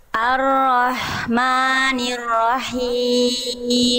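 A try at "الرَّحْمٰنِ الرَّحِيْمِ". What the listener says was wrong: Tuntaskan dulu ro-nya Bunda. Ro tasdid kedua tuntaskan dulu kadar tasdidnya, tekan. Ar-Rahmanir-Rahim.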